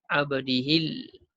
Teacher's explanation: Ujung lidah naik ke langit atas tu. Lam tu jelas kita sebut. Abdihil. Kitabah. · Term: Izhar qamari